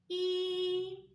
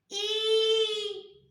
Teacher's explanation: що роблять губки коли ми вимовляємо звук і і вони розтягуються в сторону